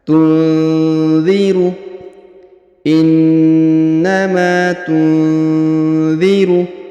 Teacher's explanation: huruf nun sukun bertemu dha maka didengungkan dan disamarkan